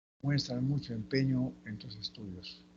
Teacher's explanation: allí es el tono final descendente